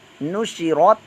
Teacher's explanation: کے اوپر حرکت، شین بھی حرکت ہے، را بھی حرکت ہے، را پر موٹا بھی پڑھیں گے کیونکہ را پر زبر پیش ہے تو را پر موٹا پڑھا جاتا ہے ، تا ساکن ہے، قلقلے کے بغیر اس کو ادا کریں